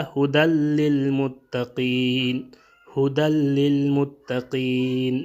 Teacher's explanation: یہاں پہ ادغام تو ہوگا لیکن غنہ نہیں ہوگا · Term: بغیر غنہ